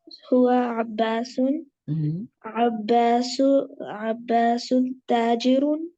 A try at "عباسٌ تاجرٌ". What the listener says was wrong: عباسن تاجرن. دونوں پہ پیش آ رہے ہیں، دونوں پہ دو پیش آ رہے ہیں. عباسن تاجرن.